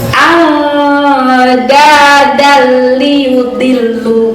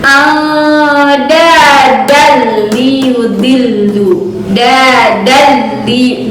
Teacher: Jadi penekanannya hanya tasydid aja, tapi tidak disertai dengan gunnah. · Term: idgham bila gunnah